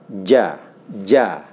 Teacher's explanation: Ja ini tengah-tengah lidah, ya, itu menyentuh daripada langit-langit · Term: huruf ja